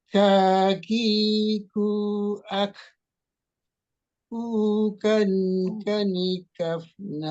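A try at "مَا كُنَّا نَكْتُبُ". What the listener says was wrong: Nah, itu kecepatan lagi Pak itu. Kanikak, kanikak, kanikak,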